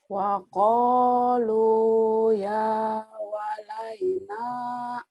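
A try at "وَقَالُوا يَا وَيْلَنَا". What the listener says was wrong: Terbalik. Wa qalu ya wailana kebalik. Wa qalu ya wailana.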